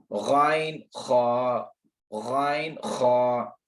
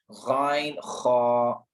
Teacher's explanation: गाइन और खा कब अदा होते हैं, ये आपके नरम तालु से, नरम तालु मैंने अभी बताया जो नरम गोश्त है, कहाँ पे, कव्वा जो आपका जुबान, जो आपके मुंह में लटका हुआ है हिस्सा गोश्त का छोटा सा, उसके साथ जो हिस्सा है वो वाला नरम तालु है, तो ये लफ्ज वहां से अदा हो रहा है, गाइन खा।